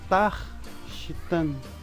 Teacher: Aqui significa que Tav é uma sílaba tônica, por isso eu vou falar Tav com mais força